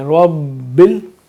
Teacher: تشدید ہے تو ربل تو تھوڑا سا ٹھہر کے پڑھیں گے